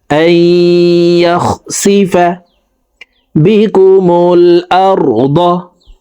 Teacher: জবর ওয়ালা হামজাটি তাসদিদ ওয়ালা ইয়ার সাথে গুন্নার সহিত মিলাইয়া পড়ব, মাঝখানে জজম ওয়ালা নুন বাদ পড়ে যাবে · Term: ইদগামে বা গুন্নাহ